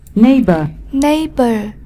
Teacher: Neighbor, nhấn âm tiết số 1, danh từ người hàng xóm.